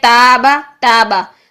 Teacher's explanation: لیکن اگر آپ ان حروف کے علاوہ کوئی بھی حرف لے لیں، تا لے لیں، ٹھیک ہے، تابا، تابا، جو پیچھے سے زبان کی جڑ ہے وہ بالکل سٹریٹ ہے، وہ اوپر کی طرف بلند نہیں ہو رہی، آواز منہ سے ڈائریکٹ نکل رہی ہے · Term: باریک